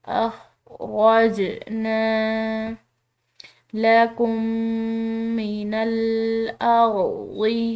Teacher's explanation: جیم حروف قلقلہ میں سے ہلا کر ادا کریں گے اس کو